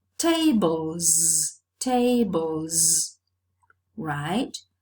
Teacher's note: Okay, this is a case of established progressive assimilation of voice in the realization of the plural morpheme, which is realized as a voiced sound because the previous sound is voiced too.